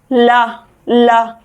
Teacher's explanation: कैसे, आप बोलकर देखिए एक बार, ला ला, जीभ क्या करती है, एकदम तालू से ऊपर जाके भिड़ जाती है, और फिर क्या होता है, जो हमारी जो ला बोलने में जो हवा निकलती है वो साइडों से निकल जाती है, इसलिए ला को हम पार्श्विक व्यंजन बोलते हैं।